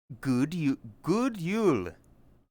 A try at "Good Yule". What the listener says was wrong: Why are you saying it like you're at the top of the month? you say it like you want to jodel. Yodeling, whatever, fuck. Good Yule. Why are you like bouncing? Good Yule.